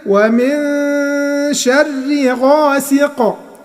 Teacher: وقفنا بالسكون فعملنا قلقلة في القاف، لان القاف من حروف قطب جد.